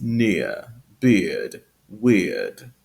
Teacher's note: And in received pronunciation, it's been pronounced near, beard, weird. So that R sound is replaced by a schwa instead of just the lengthened vowel sound.